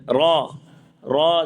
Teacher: اعوذ برب الناس، برب، را، را زبان کا کنارہ اوپر کے دانتوں کی جڑ کے تالو والے حصے سے را ادا ہوتا ہے